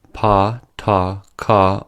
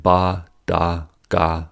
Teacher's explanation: Within the pairs, pa, ta, ka are voiceless, and ba, da, ga are voiced.